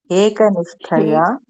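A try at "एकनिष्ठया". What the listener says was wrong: Hekanishthaya. That ya is long.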